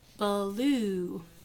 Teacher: we don't usually put a schwa in between the B and the L but some people insert that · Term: insertion